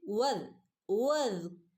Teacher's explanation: വദ് വദ് ദാലിന് half സുക്കൂന് കൊടുക്കുക. വദ് വദ് വദ് എന്ന് പറയരുത്.